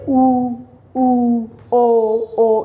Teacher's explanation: जिनका उच्चारण जब हम करते हैं तो हमारा जो ओष्ठ है वो गोलाई में खुलते हैं, होठ गोलाई में खुलते हैं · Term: वृत्ताकार